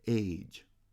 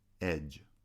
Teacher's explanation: age is a tense vowel a but edge is a lax vowel e